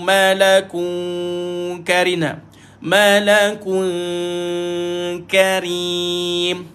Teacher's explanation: Lidah Tak dinaikkan bila baca maka tuan-tuan kena baca dengan senyum dengung samar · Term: dengung sambil senyum